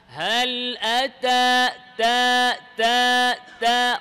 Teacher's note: তা যখন মুতাহাররিক হবে, খেয়াল করেন, তখন একেবারে অল্প বাতাস বের হবে, যেটা শুধু আপনি উপলব্ধি করতে পারবেন।